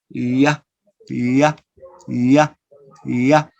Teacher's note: you use the central part of your tongue to the hard palate. So this is a palatal sound.